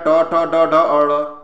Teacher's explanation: ट वर्ग में किस प्रकार के व्यंजन है, मूर्धन्य है